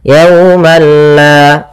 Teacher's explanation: Tapi perlu diingat bila gunnah berarti tidak disertai dengan gunnah, sehingga langsung saja, tidak boleh ditahan, tidak dibaca yaumalla, tidak, tapi langsung saja yaumalla.